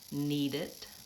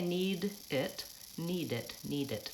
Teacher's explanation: the D jumped on to that next word